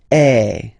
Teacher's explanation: if you combine this vowel A with the vowel I, okay, you will get the sound E. So really open E.